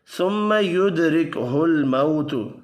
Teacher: میم مشدد پر غنہ کرنا ہے